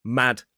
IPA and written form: mæd (mad)